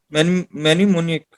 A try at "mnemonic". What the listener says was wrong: Mnemonic, mnemonic. M is silent, mnemonic.